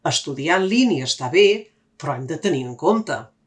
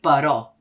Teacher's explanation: Recorda, en català hem de dir però. La tònica és la O, no la E.